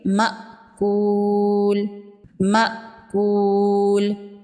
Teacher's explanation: حمزہ ساکن کو جھٹکے سے پڑھیں گے